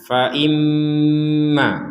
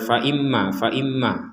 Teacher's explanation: ada mim bertasydid kita dengungkan